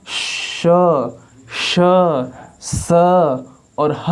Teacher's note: और आप स्वरों को बोलेंगे अ, आ, ई, कम वायु निकल रहा है। जबकि आप ऊष्म व्यंजन अर्थात श, श, स और ह को बोलेंगे तो आपके मुख से अधिक वायु निकल रहा है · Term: महाप्राण